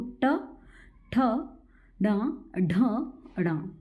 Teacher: कैसे होगा कि इसमें क्या है जीव थोड़ा सा मुड़ती है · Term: मूर्धन्य